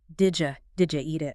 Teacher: The D and the Y mix, and it becomes something like, did ya eat it? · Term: connected speech